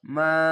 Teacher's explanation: জবরের পাশে খালি আলিফ এক আলিফ টেনে পড়বেন